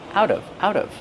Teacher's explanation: The T changes to a fast D.